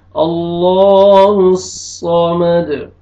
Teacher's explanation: دال ساکن ہو جائے گا، میم زبر دال مد، اللہ الصمد، صاد کو موٹا کر کے پڑھنا ہے، لام کو موٹا کر کے پڑھیں گے